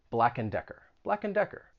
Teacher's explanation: you're not going to say and you're going to reduce it to just n